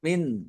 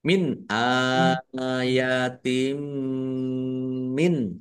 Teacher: mim sukun bertemu dengan huruf mim idgham mimi atau idgham mutamasilain dibaca mendengung